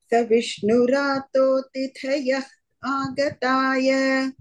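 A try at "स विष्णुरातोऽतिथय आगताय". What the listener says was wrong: don't do तिथय आगताय. So अतिथयः आगताय, there is a visarga, but then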